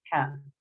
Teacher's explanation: Kalau kita kenal di Indonesia itu disebut H kecil. H kecil, ya letaknya itu ada di tenggorokan tengah.